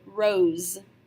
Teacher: if you have one S between two vowels, we follow the rose rule. That means that this S is going to make a Z sound, just like in the word rose.